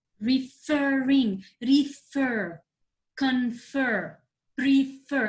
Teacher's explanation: i'm stressing the last syllable